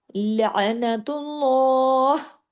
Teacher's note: अल्लाह के नाम में लाम को मोटा करके हैवी करके पढ़ा जाता है। कैसे? लनतुल्लाह। · اللہ کے نام میں لام کو موٹا کر کے، ہیوی کر کے پڑھا جاتا ہے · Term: लाम जलाला, لام جلالہ